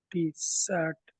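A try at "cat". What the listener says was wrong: సిని కాగా పలకండి దయచేసి.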